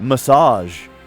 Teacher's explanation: zh is a sh sound. It's the sh sound vocalized